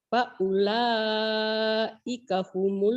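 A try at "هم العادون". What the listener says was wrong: Homolnya jangan ditahan. Homol. Adun.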